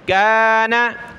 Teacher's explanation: नून को नहीं खींचना, काफ को खींचेंगे